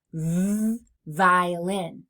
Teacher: For our next fricative sound, the vv sound. My mouth is in the exact same place as for the f sound, but this time my voice is on. So I feel that buzzing in my throat.